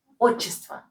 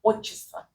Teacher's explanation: T is almost silent. You almost don't pronounce T.